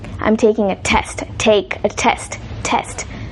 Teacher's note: You might have noticed that when some speakers of English say some sounds, you can hear or feel a puff of air coming out from their mouth